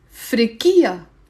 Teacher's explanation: if it's a girl you say frikkiya the stress on ki